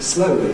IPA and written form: ˈslʌʊli (slowly)